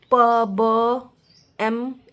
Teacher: जैसे प ब एम इन सब का साउंड जो है बायवियल के माध्यम से प्रोड्यूस किया जाता है। इसमें दोनों लिप्स एक साथ काम करते हैं। · बायवियल में जो है लोअर लिप्स और अपपर लिप्स के हेल्प से साउंड प्रोड्यूस किया जाता है। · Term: बाइलेअल